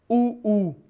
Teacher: उ में दोनों होठ नजदीक आ रहे हैं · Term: वृत्ताकार स्वर